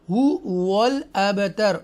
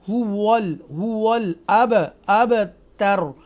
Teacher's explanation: مثلا ان شانئک هو الابتر، یہ جو واو ہے یہ لپس لیٹرز ہیں، lips letters, okay, lips letter 4 ہوتے ہیں، ان میں سے واو ہے۔ آپ جب واو کو ادا کریں گے تو آپ کے ہونٹ راؤنڈ ہو جائیں گے، گول ہو جائیں گے۔